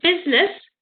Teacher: you don't actually hear the i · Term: unstressed vowel